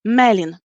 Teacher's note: If this is the two-syllable word, like Melin, the stress is always going on the second to last syllable.